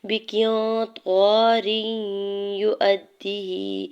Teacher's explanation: قاف کی زیر کو نون ساکن کے ساتھ ملاتے ہوئے نون ساکن پہ اخفا کریں گے. الف طاء کے اوپر زبر الف مدہ ہو رہا ہے. · را کے نیچے دو زیر کی تنوین کو یا مشدد کے ساتھ ملاتے ہوئے یہاں پہ ادغام مع غنہ کا رول اپلائی ہو رہا ہے. یا کے پیش کو بغیر کھینچی ہوئے ادا کرنا ہے.